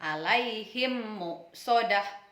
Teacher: walha idgham mimi atau idgham mitslain hukum bacaan ini berlaku ketika mim mati bertemu dengan huruf mim dibaca menjadi satu seolah-olah menjadi bertasydid dengan disertai dengung